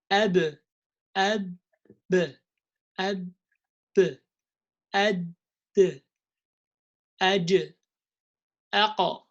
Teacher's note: with the qalqala, I let them leave each other, but without any haraka.